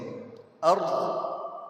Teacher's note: جب ہم وقف کرتے ہیں اس کے اوپر ارض، تو اس وقت دال کی آواز نہیں آنی چاہیے، یعنی قلقلہ نہیں ہو جانا چاہیے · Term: ضاد